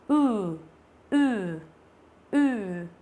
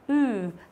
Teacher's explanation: Chữ u bình thường mình chỉ đọc là u thế thôi đúng không, nhưng chữ này đọc là ừ. Đó, thì mình chu miệng ra nhá, ừ, và mình nói dài ra, mình thấy rung ở họng lâu một tí